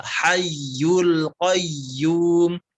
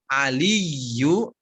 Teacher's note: itu kalau menemukan tanda tasydid di huruf ya maka ditekan dengan sempurna, jangan setengah-setengah